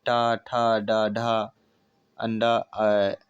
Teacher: टा वर्ग में मूर्धा स्पर्श होता है